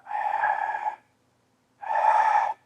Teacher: Ha is a voiceless fricative. It means that it is a free flow of air that's not interrupted by anything, and where we do not vibrate our vocal cords. It's like you're breathing.